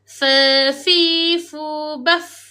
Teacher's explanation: mestilah huruf fa tersebut bersifat hams. Iaitu melepaskan nafas.